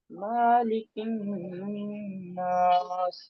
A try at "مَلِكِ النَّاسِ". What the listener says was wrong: मालिक इन्नास नहीं मलिक इन्नास।